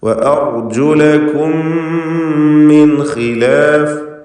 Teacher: അർജുലക്കും എന്നതിലെ സാക്കിനത്തായ മീം ശേഷമുള്ള മീമിൽ പൂർണ്ണമായും ലയിപ്പിച്ച് മണിക്കുന്നു. ഇദ്ഗാം ശഫവി അല്ലെങ്കിൽ ഇദ്ഗാം മിസ്ലൈൻ സഗീർ എന്നും പേര് പറയാം.